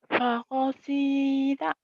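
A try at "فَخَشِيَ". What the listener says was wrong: shin fakhashita kemudian hutang shin ya, shinnya kurang keluar, fakhashita nggak apa-apa.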